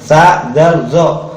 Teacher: Tempatnya sama, yaitu di ujung lidah dengan ujung gigi.